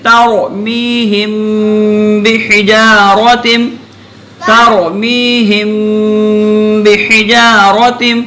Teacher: میم کے بعد با آ رہی ہے نا، تو میم پہ رک کے چلیں گے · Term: اخفا